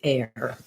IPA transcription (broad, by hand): er